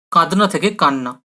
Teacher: কাঁদনা থেকে দটা চলে গিয়ে কান্না হয়ে যাচ্ছে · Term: সমীভবনের উদাহরণ